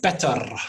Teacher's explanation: might say the word better as better with a R at the end, because it's a super-rhotic accent.